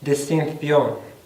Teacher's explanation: sonido de ción es la fricativa dental sorda